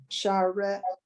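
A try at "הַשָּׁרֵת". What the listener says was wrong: Okay, so now you, for whatever reason, you mostly pronounced those two dots as an A, but one time you pronounced it a little more as a eh. So it's rate. It's hasharet.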